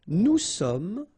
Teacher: final S not pronounced